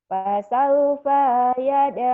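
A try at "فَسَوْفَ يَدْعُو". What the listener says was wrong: Pendek. Pendek.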